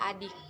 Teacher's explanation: depan tak bulat contoh katanya Bid'ah yang bunyi kedua adalah Ih agak tinggi tak bulat